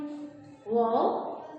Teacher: یہ ہونٹوں کو گول کر کے ادا ہوتا ہے، یعنی دونوں ہونٹ آپس میں گول ہوتے ہیں